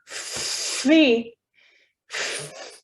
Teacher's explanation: my upper teeth and my bottom lip. So that's a labiodental sound.